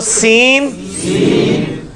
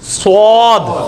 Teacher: सीन को मोटा करेंगे तो सीन सीन स्वाद